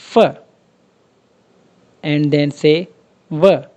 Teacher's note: जिनको प्रोड्यूस करने के लिए आपका नीचे वाला लिप ऊपर वाले टीथ को टच करे तो वो साउंड्स लेबियोडेंटल्स कहलाते हैं